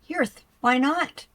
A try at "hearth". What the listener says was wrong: It's pronounced like heart. Like heart. Heart, not hearth.